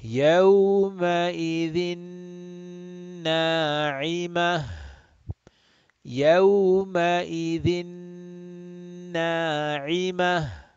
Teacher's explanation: idgham bi ghunna, idgham with ghunna, meaning idgham with the nasal sound